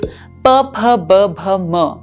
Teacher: the final consonant that we reach at both of our lips is M with both the lips